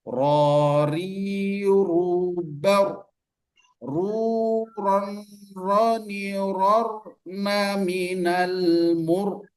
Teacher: Nah, diminimalisir getarannya. Jadi tidak boleh bergetar terlalu banyak atau berlebihan. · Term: huruf ro